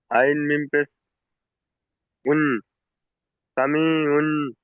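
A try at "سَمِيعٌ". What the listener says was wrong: উন নয়, আইন মিম পেশ এখানে আইন, এখানে যে আইনের উপরে যে দু পেশ তানবিন এসছে না, এই তানবিনটার আওয়াজটা হবে না। যদি এখানে তানবিনটা যদি পড়ি, তাহলে আইন মিম পেশ, আইন দু পেশ উন হয়, আইন দু পেশ উন, তানবিন নুন সাকিনের আওয়াজ আগে, তাই না?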